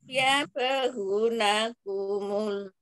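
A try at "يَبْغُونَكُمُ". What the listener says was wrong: ya bahu afwan hu juga matobi ya ada wawu sukun setelah huruf berharokat dhammah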